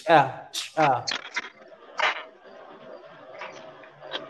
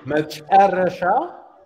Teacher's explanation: you take the back of your tongue into the back of your mouth when you say cha cha